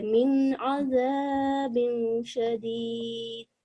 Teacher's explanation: The noon is going to be short and clear because it's followed by ayn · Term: izhar